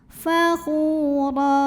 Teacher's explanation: Mukhtalang fakhu, khu madhabi'i dhahiri karena ada waw sukun didahului dhammah, maka kha-nya panjang 2 harokat. Fakhura, huruf ra dibunyikan secara tafkhim karena ro-nya berbaris di atas tanwin fathah, maka ro-nya dibaca tebal. Fakhura, ra jika berhenti hukumnya mad iwad karena ada baris tanwin fathah yang kita berhentikan atau kita wakafkan, maka baris 2-nya jadi fathah, jadi 1 dan dipanjangkan 2 harokat.